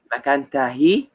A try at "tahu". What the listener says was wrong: Tahu, bukan tahi.